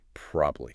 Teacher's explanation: This is a classic case of syllable shortening, cutting the middle vowel out of probably entirely, reducing it from 3 syllables to 2